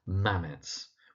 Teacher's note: that first word is pronounced Mamets, with the emphasis on the first syllable